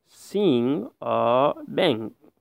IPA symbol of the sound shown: ŋ